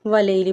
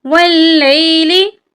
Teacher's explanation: लाम के ऊपर शद है, शद की अदायगी नहीं करते। वाव को जब लाम के साथ मिलाएंगे तो लाम को सख्ती से पढ़ेंगे, क्योंकि शद वाले हर्फ को 2 बार पढ़ा जाता है। यानी पहले वाव के साथ लाम को मिलाएंगे, फिर लाम को या के साथ मिलाएंगे।